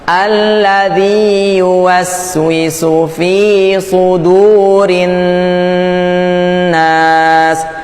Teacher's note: Nun ini kan bertasdid, jadi harus agak ditahan dikit. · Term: nun tasdidnya